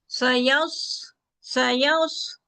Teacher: सीटी की आवाज है, मोटा हरफ है, हवा चलती महसूस होती है, आवाज भी चलती है